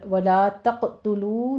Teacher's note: اور ولا تقتلوا میں لام الف لا الف مد ادا کیجیے، قاف کے اوپر قلقلہ کرنا ہے، قوی قلقلہ ہوگا